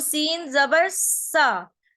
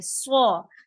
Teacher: ठीक है, अगर हमने सीन जबर पढ़ना है तो सीन जबर सा, लेकिन स्वाद को पढ़ना है तो हम इसको सा नहीं बोलेंगे, इसे हैवी साउंड मोटा पढ़ेंगे